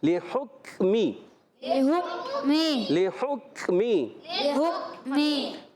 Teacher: لحکمی میں لام کے نیچے زیر ہے، بغیر کھینچے ادا کریں گے، ہا کو کاف سے ملائیں گے، کاف کو ساکن رکھنا ہے